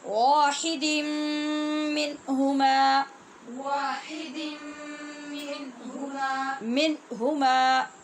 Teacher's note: نون تنوین کے بعد میم مشدد ہے، لہذا غنے کے ساتھ پڑھیں گے